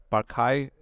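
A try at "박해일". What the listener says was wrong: They don't. yeah, they don't pronounce the R. They say Pak Hei.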